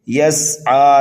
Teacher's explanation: سین کو سینٹی کی آواز دیں گے اور عین کو ایک الف کے برابر کھینچ کر کے پڑھیں گے، یہاں پر بھی وقف بالسکون ہوگا۔